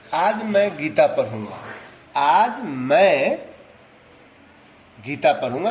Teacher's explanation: तो यहाँ मैं पर बल पड़ रहा है ना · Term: बलाघात